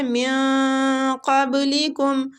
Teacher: خلقکم والذین، زال کو کھینچیں گے، یا مد ہے، من قبلکم، نون ساکنہ کے بعد قاف پر مستعلیہ حروف آ رہا ہے، قاف کے مخرج کے قریب جا کے ہم نے اخفا کرنا ہے